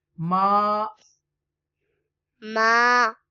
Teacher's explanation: Ma, you will stretch because there is a zabar before alif, and this is alif madda